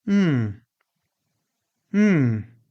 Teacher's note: Mmm, with a falling intonation. This is one of the most common. Mmm. It means, I'm listening.